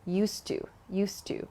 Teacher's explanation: also please consider the pronunciation here so not used to but native speakers connect the d and the t sound at the end of used and to